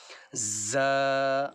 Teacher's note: یہ وہاں سے نکلے گا جہاں سے سین نکلتا ہے سختی کے ساتھ، ز۔